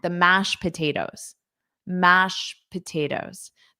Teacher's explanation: But then because I'm connecting it on to the next word, you really don't hear it. So you might just hear mash without any T, any ED, which is very common.